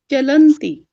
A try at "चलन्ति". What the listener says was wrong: एक तो चलती में चलती ला हलंत हो रहा है, और चलंत में चलंती दीर्घ हो रहा है।